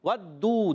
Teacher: دال پر پیش ہے اور واو ساکن سے پہلے پیش، واو مدہ ہے، ایک الف کھینچ کر ادا کرنا ہے